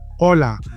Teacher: In Spanish, H is 100% silent. So pretend is not there.